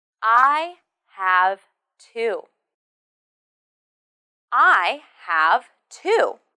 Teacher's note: This question is about quantity, so the stress should be on the number.